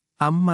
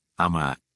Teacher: surah Anaba ayat 1 pada kata Amma terdapat mim bertasdid sehingga mim tersebut dibaca dengan dengungan atau gunah selama dua harakat